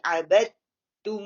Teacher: تا کے اوپر سکون ہے اور اس کے اوپر شد ہے. تو ہم فرسٹ والی جو دال ہے نا اس کو ہم اگنور کر دیں گے، اس کو ڈراپ کر دیں گے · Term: ادغام